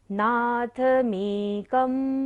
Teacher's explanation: लंघयन्ति ये संशितास तालव्य श है, ये संशितास त्रिजगदीश्वर नाथमेकम्। बिंदी के बाद कोई भी अक्षर नहीं है, थर्ड लाइन फिनिश हो रही है, इसलिए बिंदी को उच्चारण क्या होगा, म।